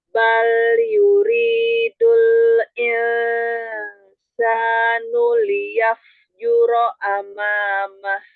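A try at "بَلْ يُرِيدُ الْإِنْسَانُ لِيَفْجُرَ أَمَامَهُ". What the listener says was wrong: Jangan menurun dorongan suara ketika ikhfa. Jadi nggak hilang suaranya. Bal yuridul insanu liyafjura amamah. Jadi sama. Harokat fathah, kasroh, dhammah, gunnahnya sama. Dorongan suaranya jangan melemah.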